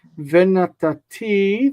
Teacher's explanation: stress on the end of the word, it's a future